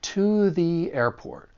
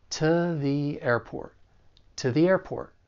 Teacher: like a spectrum and you may hear anywhere in between because the fact that you're not stressing these words and you're using a weaker vowel sound that's what's changing it to more of a schwas sound